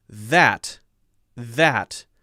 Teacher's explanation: the other issue for the chinese english pronunciation of th is the th as a z for a voiced sound for example